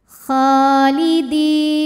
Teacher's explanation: Kha mad tabi'i muqaddar sebab kha berharokat fathah panjang. Cara bacanya panjang kha-nya 2 harokat.